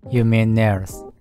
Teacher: mean▁の末尾の▁N▁の音と▁there's▁の頭の母音がつながって3拍で▁You▁mean▁there's▁っていう感じで聞こえています。